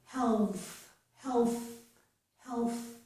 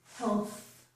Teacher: For the L, I'm putting my tongue on my teeth. So that's what I have here, tongue tip on teeth.